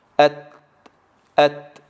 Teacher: خلاص نطقنا التاء افتح فيخرج الهواء، أت أت، ولا نقول أت أوت إلى كما نسمع من البعض.